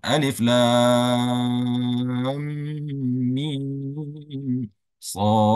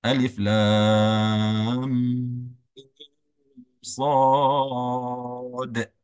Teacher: shad itu huruf akhirnya bunyi adalah huruf dal dan disukunkan ya karena kita wakaf maka dikasih hukumnya itu qalqalah